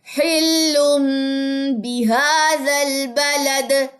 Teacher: دال جزم کلکلا لے گا